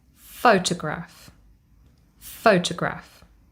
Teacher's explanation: To, the second syllable, is unstressed. And our last syllable, graph, carries secondary stress.